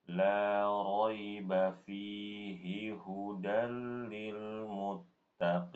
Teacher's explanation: perhatikan pada kata fihi. Di situ fi-nya panjang karena ada ya sukun.